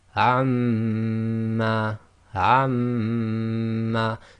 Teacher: So your lips are still coming together as the normal makhraj of Meem, but you're vibrating the sound in your nasal cavity. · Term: Ghunna